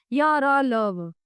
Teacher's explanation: इन व्यंजनों का उच्चारण करते समय जिह्वा मुख के किसी भी भाग को पूरी तरह नहीं छूती तथा इनके उच्चारण में श्वास का अवरोध बहुत कम होता है। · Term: अंतस्थ व्यंजन